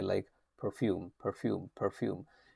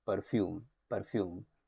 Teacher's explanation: And the R sound is usually pronounced, in a spread way.